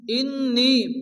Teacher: নুনের উপর তাসদীদ, নুন গুণ ওয়াজিব, নিয়ে মাদ্দা, এই মাদের পরে দ্বিতীয় শুরুতে হামজা আসছে মাদ্দে মুনফাসিল।